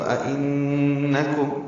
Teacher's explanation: اَإِنَّكُمْ حمزہ دو حمزہ اکٹھے ہیں، پہلا حمزہ الف کی شکل میں ہے، اس کو بالجہر ادا کریں گے، اور ان میں ان جو دوسرا حمزہ ہے اس کو تسہیل سے پڑھیں گے اور نون مشدد سے ملا دیں گے، تو اِنَّكُمْ اس نون مشدد پہ غنہ ہوگا، آواز ناک کی بانس سے ملے جائیں گے، کاف باریک ہے، میم ساکن پہ اظہار ہے، اظہار شفوی۔